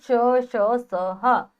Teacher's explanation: इन व्यंजनों के उच्चारण में मुख से गर्म श्वास वायु रगड़ खाती हुई निकलती है, इसी कारण ये ऊष्म व्यंजन कहलाते हैं।